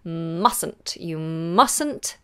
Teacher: so that T at the end of must in this contraction is gone